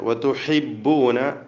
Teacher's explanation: ഹാഇൻ്റെ ഉച്ചാരണം തൊണ്ടയുടെ മധ്യത്തിൽ നിന്നാണ്, ശ്രദ്ധിക്കുക.